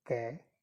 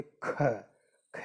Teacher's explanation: और महाप्राण, इसमें प्राण वायु का अधिक उपयोग किया जाता है, तो इसमें होगा वर्ग का दूसरा और चौथा।